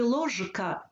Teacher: в слові ложка чітко вимовляємо звук ж він не уподібнюється